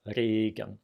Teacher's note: the R I use is the one that is at the K position